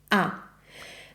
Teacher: In Italian the a is always a. It's an open sound. A very open sound like this.